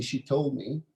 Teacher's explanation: I don't pronounce the d in told